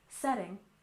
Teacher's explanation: we stress the first syllable in setting